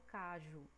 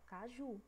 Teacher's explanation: Ju tá puxando mais, tá mais demoradinha. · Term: oxítona